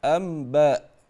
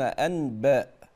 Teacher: يقولون امبا ولا يقولون انباء يقلبون النون ميما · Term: يقلب النون ميما